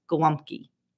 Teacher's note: when you say Golumki, it's not the L sound, it's the W sound